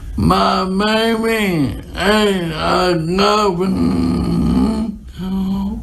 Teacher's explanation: Her voice is very strained. It's very rough. We hear that there's a lot of air escaping through the nose. She sounds a little bit hypernasal. Her articulation is also imprecise.